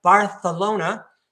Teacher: that C makes a th sound, a fricative. Okay? You stick your tongue between your teeth like that. Bartholona sounds like you have a list.